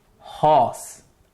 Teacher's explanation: horse is a glottal sound. It comes through the throat by the vocal cords being the articulators.